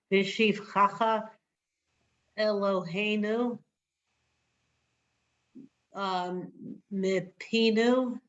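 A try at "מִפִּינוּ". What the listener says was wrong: Me peanut. Good.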